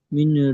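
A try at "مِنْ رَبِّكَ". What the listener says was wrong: মিন নয়, এখানে মিন হবে না, নুনটা তো উচ্চারণ হচ্ছে না, এখানে ডাইরেক্ট উচ্চারণ হবে মির, মিম রজের মির। হ্যাঁ, মির রব্বিক হবে, মিন হবে না, মিন রব্বিক হবে না। নুন সেকেন্ডটা বাদ গিয়ে রয়ের সাথে মানে বানানটা করতে হবে, মিম রজের মির, ঠিক আছে? নুন সেকেন্ডের পরে র এসছে, ওই জন্য নুনটাকে বাদ চলে যাবে। আচ্ছা, মির রব্বিকা,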